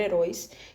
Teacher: É a última sílaba da palavra heróis, que é a sílaba tônica.